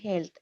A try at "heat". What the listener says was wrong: হিট, এটা হবে হিট। হেট না, হিট মানে